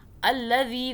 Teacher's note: دال کو سافٹ پڑھیں، زبان کو باہر کیجئے اور پھر ادا کیجئے